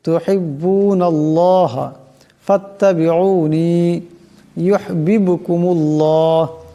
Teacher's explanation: এখানে আল্লাহ নামের ডাইনে নুনের উপর জবর আসছে, আল্লাহ নামকে মোটা করিয়া পড়তে হবে।